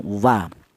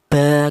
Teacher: Akan tetapi di sini dibedakan ya, walaupun sama berasal dari kedua bibir, akan tetapi dibedakan. Untuk huruf wawu ini dihasilkan dari kedua bibir yang renggang.